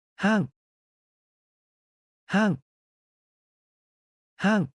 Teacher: Sounds like saying hang starting high and sliding down long.